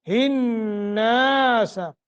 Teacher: آگے نون مشدد ہے، غنہ کر کے پڑھیں گے